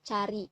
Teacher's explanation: Selanjutnya pada plosive palatal yang pertama terdapat bunyi ceh. Bunyi ceh merupakan bunyi tak bersuara